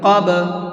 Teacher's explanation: با کے اندر قلقلہ کریں گے، اس لیے کہ با بھی حروف قلقلہ میں سے ہے، تو یہاں بھی آواز کو ڈبل کر کے پڑھیں گے